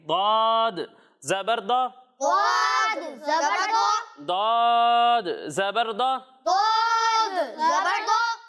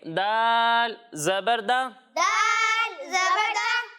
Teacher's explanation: एक हर्फ है दौद और दूसरा हर्फ है दाल। जब हम दौद की अदायगी करेंगे तो इसे मोटा पढ़ेंगे और जब हम दाल की अदायगी करेंगे तो इसे बारीक पढ़ेंगे।